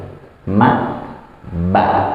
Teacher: Maksudnya bibir yang terbuka dan bibir yang tertutup. Dan mim dan ba ini merupakan huruf, ya dua huruf yang keluar dari bibir yang tertutup